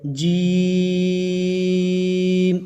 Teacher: 3 الف کی مقدار تک اس کو کھینچ کر لمبا کر کے پڑھیں گے